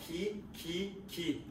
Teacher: 기 할 때 혀 양쪽 끝이 이에 닿는다. 어금니 소리.